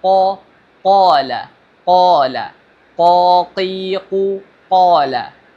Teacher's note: Huruf qaf memiliki makhraj, yaitu berada di pangkal lidah atau lidah bagian belakang, paling belakang, mendekati tenggorokan ya. Jadi membaca huruf qaf itu harus sesuai dengan makhrajnya ya, yaitu berada di pangkal lidah.